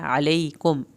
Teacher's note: अलैकुम मीम को नहीं हिलाना, काफ को पतला पढ़ना है